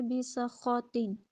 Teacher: اس میں سین کی ادائیگی جب آپ کریں تو اس میں سیٹی کی آواز نکلے گی